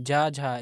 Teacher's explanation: अगर देखेंगे ज झ ये क्या है ये तालु हो जाएगा तालु व्यंजन के अंतर्गत आता है